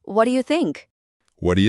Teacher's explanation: जब English speakers इसे जल्दी में बोलते हैं तो व्हाट डू यू अक्सर व्हाट या जैसा सुनाई देता है।